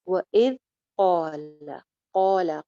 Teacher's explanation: قول قوف موٹا ہے، اس کے ساتھ کا الف بھی موٹا ہو جائے گا، قو ایک الف لمبا، ل چھوٹی سی آواز، قول۔